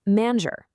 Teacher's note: Before an E, I, or Y, you get a soft zh sound, like the S in treasure.